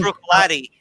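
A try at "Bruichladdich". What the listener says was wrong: There's a C there, okay? Brooklotic.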